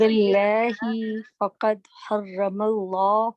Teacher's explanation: لام کو الله اور لائٹ کرو، باللہ پہ لام بھی لائٹ کرو